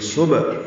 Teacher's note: ہا وسط حلق سے ادا کریں گے اور اس کو 2 حرکات لمبا کریں گے